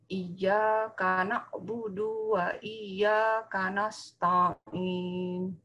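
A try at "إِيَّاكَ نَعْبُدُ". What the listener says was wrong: Tolong Ibu, du-nya ya. Du-nya Pendek, Bu ya. Du-nya pendek, Bu. Iyyaka na'budu wa. Dua. Du-nya pendek.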